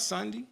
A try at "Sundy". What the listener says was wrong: Yeah, you said Sunday. without the A.